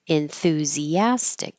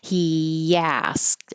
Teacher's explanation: It's a intrusive Y, or sometimes I call it a hidden Y, because you're going from the very high sound enthusi, E is very high, and then the A is very low. So if you keep your tongue moving, enthusia, I'm moving my tongue from a high position to a lower position as I keep making voicing.